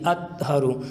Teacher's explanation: اطہر، طا حروف قلقلہ میں سے ہیں اور اس کے اوپر جزم ہے، تو یوں قلقلہ کر کے ادا کریں گے اطہر۔ اگر قلقلہ نہیں کریں گے تو یوں آواز آئے گی اطہر، تو بجائے طا کے تا کی آواز آئے گی